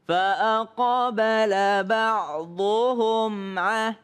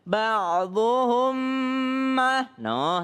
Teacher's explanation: kalau mim ketemu dengan ain tidak berdengung